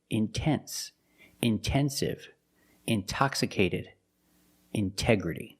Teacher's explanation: The stress is after the NT in these words. So we pronounce a T as a pure T.